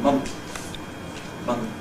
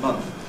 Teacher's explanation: For example, in the word month, you may sometimes hear people pronounce it with a plosive between the N and the Th, that is saying month, month, rather than month.